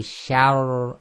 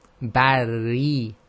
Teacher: the Sha is light and the Ra is heavy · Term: heavy Ra